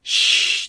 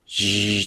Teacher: シーって言った場合と、ジーって言った場合と、このシーとジーで声帯の震えが感じられる